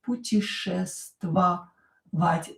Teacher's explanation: ya not stressed pronounce it e